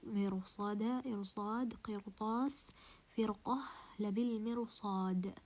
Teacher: pronounce the ra as a heavy ra, although it's preceded with kasra? Because after the ra sakina there is a حرف مستعلي, there is a heavy letter, and this heavy letter has a power.